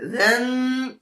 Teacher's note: ذال دو زبر ذن، زبان کی نوک اوپر والے سامنے والے دو دانتوں پہ